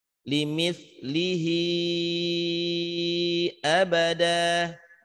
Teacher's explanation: karena ada hamzah di depannya abadan, maka hi-nya dihukumkan marsilah tawilah, panjangnya 4 harokat.